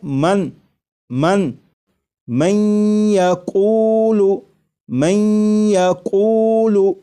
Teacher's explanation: یہاں پر دیکھیے گا یہ نون ساکن ہے، نون ساکن کے بعد جب یا آ جائے تو نون ساکن کو یا میں ادغام کر کے پڑھیں گے، ملا کر پڑھیں گے، اور نون ساکن کو یا میں ادغام اس طرح کریں گے کہ غنہ بھی ہو، جیسے لکھا ہوا ہے من من من یقول من یقول، تو میم کے بعد آپ کو یہ جو آواز آ رہی ہے میں این این، یہ نون ساکن کا یا میں ادغام بھی ہو رہا ہے، اور ادغام اس طرح ہو رہا ہے کہ غنہ کے ساتھ۔